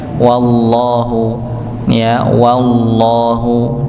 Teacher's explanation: wallahu dengan huruf wawu, ditipiskan wawunya. Wallahu, bukan wallahu, ya, tapi wallahu, ya, wawunya dibaca tipis, masuk kepada lafaz Allah, ya, lafzul jalalah.